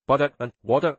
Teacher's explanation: They often use a flap T or soft D sound.